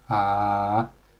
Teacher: we just drag your voice down like ah until it reaches the bottom until you think it's the lowest of your voice and you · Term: third tone